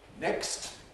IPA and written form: nekst (next)